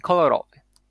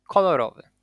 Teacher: Ko is secondary stressed, Ro is primarily stressed.